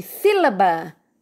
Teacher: o ba é a última sílaba, o lá, penúltima, e o si é a antepenúltima e é a mais forte, sílaba. Então, é a palavra proparoxítona. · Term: sílaba tônica